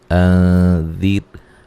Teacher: یہاں نون ساکن کا اخفا ہے باریک، ٹھیک ہے، غنے کے ساتھ پڑھیں گے